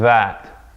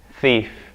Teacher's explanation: that's the difference between dhaal and tha. The vibration that happens in the vocal cords right here.